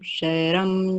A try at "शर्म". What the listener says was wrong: शर्म, शर्म, शर्म क्यों, र पूरा नहीं है, शर्म।